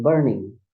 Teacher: the burn is on stress syllables and then ning is on unstressed syllables.